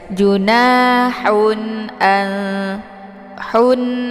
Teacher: bertemu dengan Hamzah ini dinamakan dengan izhar Hakiki cara bacanya ee tanwinnya dibunyikan secara jelas atau jelas bunyi n-nya cukup ditekan saja